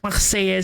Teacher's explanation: you don't do the guttural R.